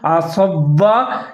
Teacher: عین کو آپ نے ظاہر کر کے پڑھنا ہے، صاد کو موٹا کر کے پڑھنا ہے اور واو کے ساتھ ملا کے پڑھیں گے۔ اگر ایک ہی